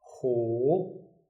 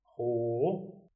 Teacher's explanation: The third tone, we start high, we go low, then we go up again.